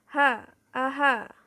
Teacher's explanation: ha aha adalah konsonan fricative atau faringal yang pelafalannya dibentuk dengan cara pita suara terbuka lebar sehingga udara keluar dan digesekkan melalui glotis